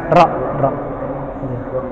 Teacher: Mungkin kalau dihitung-hitung berapa kali getar, sekitar 3 sampai 5 getaran.